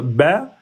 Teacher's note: le ba parce que ça on utilise les deux lèvres